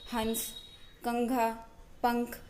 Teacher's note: इसका उच्चारण करते समय हवा नाक से बाहर निकलती है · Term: अनुस्वार